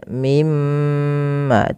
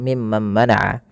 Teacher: ketika kita membaca mim tasydid ini, itu perlu ditahan suara gunnahnya ya, atau menahan suara mimnya. Mimma, tidak langsung mimman mana'a.